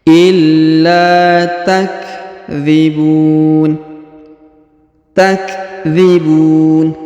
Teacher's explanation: Huruf la ditahan dan ditekan lalu dipanjangkan 2 harokat ya. Yang pertama karena ada tanda tasdid, yang kedua ada alif di depannya ya.